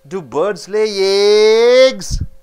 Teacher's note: You stress on eggs, it becomes repeated question.